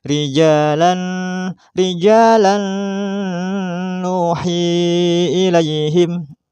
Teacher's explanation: maka harus memasukkan suara tanwin pada nun menjadi dengan disertai dengung atau gunnah, maka menjadi rijalan, dengung.